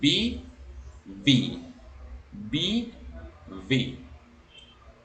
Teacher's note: Esta B se pronuncia diferente, es V. Los labios de abajo son jalados por los dientes de arriba de la boca.